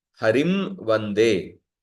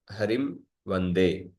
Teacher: पर अनुस्वार का केवल नासिका है, नासिका अनुस्वारस्य। तो मकार का ओष्ट और नासिका, पर अनुस्वार का केवल नासिका है।